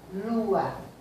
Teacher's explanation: lua, que a sílaba tônica é o lu